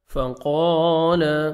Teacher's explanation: قاف کو موٹا کر کے 1 سیکنڈ کھینچنا ہے ، الف مد ہے، فقال انا جدھر بھی آئے گا آپ